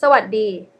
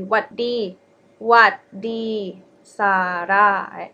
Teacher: But we dropped it a lot. We actually dropped the first syllable, sa. Then it would be what di sara.